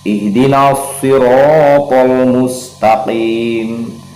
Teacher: ro-nya kita baca tafkhim lagi dan takrir ya, bergetar.